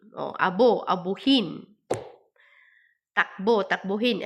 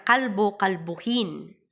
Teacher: Nagiging U ang O kapag may hulapi.